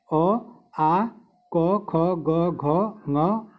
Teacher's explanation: अ, आ, क, ख, ग, घ, ङ, ह और विसर्ग से इन सब का उच्चारण कंठ से होता है।